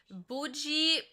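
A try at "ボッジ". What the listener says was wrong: Did you call him Bougie? Boji. like you're saying it in French. You're like Bougie.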